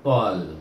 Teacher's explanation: Ta pula bertemu dengan alif lam kamariyah, baca iaitu tol, matikan dengan huruf lam